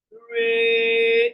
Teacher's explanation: Re is the mid tone. It's in the middle and it's flat.